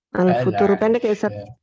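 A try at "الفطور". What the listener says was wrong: Tunya panjang, ada waw. Al-futuru. Setelah waw, ada waw. Panjang.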